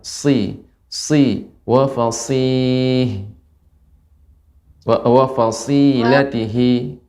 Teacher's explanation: Namun dia sin ya, mirip dengan sin. Ya, dia sifatnya sofir, tajam.